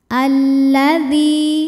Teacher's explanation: Alif lamnya dinamakan dengan alif lam syamsiah karena alif lam menghadapi huruf syamsiah yaitu lam juga, maka alif lam tidak dibaca. Alladzi.